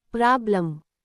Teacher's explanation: In the word problem, the second part, lem, is unstressed. So the vowel e does not sound like e or a, it becomes a soft a. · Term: schwa